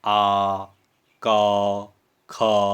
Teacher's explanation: जब आप बोलेंगे तो आपको अनुभव होगा कि ये अक्षर आपके गले से निकल रहे हैं। जैसे आ, क, ख, तो ये कंठ से उत्पन्न हो रहे हैं। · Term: कंठ्य